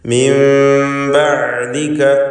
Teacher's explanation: ഇഖ്ലാബ് ചെയ്ത് നൂനിനെ മണിച്ചുകൊണ്ട് ഉച്ചരിക്കുക. അഥവാ മീമിൻ്റെ ശബ്ദം നൽകി പൂർണ്ണമായും ആ നൂനിനെ മീമാക്കി മാറ്റി മണിക്കണം എന്നതാണ് ഇഖ്ലാബ് കൊണ്ട് ഉദ്ദേശിക്കുന്നത്.